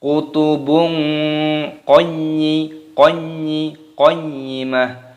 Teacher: Fiha, semuanya sama-sama matopi'i. Kutubung, dhammah tanwin bertemu dengan qaf dibaca ikhfa. Cara membacanya disamarkan